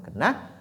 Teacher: Ensuite vient Na, qui sort ici de l'extrémité de la langue, donc Na. Iyyaka na, et qui est très léger aussi, donc on ne dit pas non, mais plutôt na.